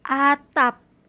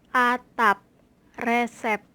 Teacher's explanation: p yang ditandai dengan koma diatas yaitu bunyinya tidak lepas terdengar sebagai Koda suku